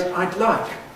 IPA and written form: aɪd ˈlaɪk (I'd like)